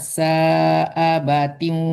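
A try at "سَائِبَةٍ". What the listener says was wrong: sa'ibatiu, ibatiu bukan abatiu. Coba lagi dari wala.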